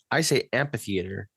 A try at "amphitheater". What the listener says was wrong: I don't think it's a hard P. It's a PH. Amphitheater. You were not taking into consideration the H after the P.